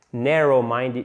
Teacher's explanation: Faites bien l'accent tonique sur la première syllabe.